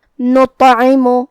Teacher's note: کلمت نطعم میں یہاں حرف الطا ہے. ہمیں یہ حرف کو بھاری آواز میں منہ پھلا کے ادا کرنا ہے، اور جو کہ اس پہ جزم ہے تو طا کو ہمیں قلقلہ سے پڑھنا ہے، مطلب ہم یہ حرف کو ہلا کے پڑھیں گے.